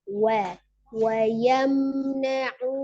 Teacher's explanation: mim sukunnya sempurna, wayam temukan dua bibirnya, Wa yamna'un.